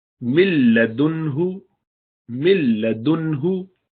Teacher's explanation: مل مل، تو مل نہیں کریں گے، ناک سے آواز بالکل نہیں آنی چاہیے بلکہ سیدھا لام میں